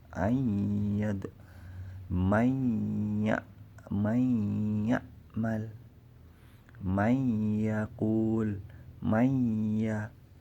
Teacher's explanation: Jadi hilang bunyi nun sukun, cuma dengung. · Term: Idgham bi gunnah